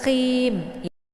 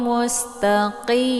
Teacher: Ini qi dibaca tebal ya, bukan ka ya, bukan ki. Tapi qi juga jangan baca khim.